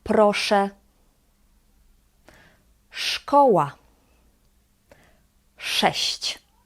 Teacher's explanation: Similar to English sh in the word shampoo, but again in Polish it is harder